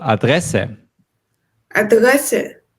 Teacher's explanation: focus on the second syllable